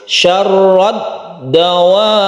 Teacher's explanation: Jadi ro itu langsung ke dal, kita tabrakkan ke huruf dal seakan-akan dia itu bersukun. Itu hakikatnya sukun dal.